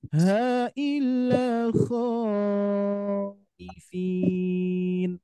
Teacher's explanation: Jadi kita tetap fokusnya adalah tadi alis bertemu dengan alif berharokat yang dibaca 2 harokat itu. Kalau ada alis bertemu dengan hamzah, ini tetap wajib hukumnya dibaca panjang.